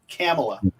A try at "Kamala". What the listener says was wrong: No, there's no third A. There's only 2 A's. Kamala. It's not Kamala. Kamala.